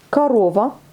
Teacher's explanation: Alors, on ne prononce pas le O, on prononce le A.